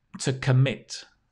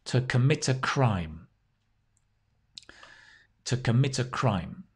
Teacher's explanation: Notice that the stress is on the mit. So the com, C-O-M, becomes k.